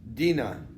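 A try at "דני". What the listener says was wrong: Does it say Dina? There's a difference between Dani and Dina.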